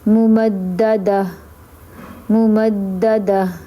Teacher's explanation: تا کو ہا کی آواز نکالیں گے، ہا کر دیں گے تا کو اور اس کو ساکن کر دیں گے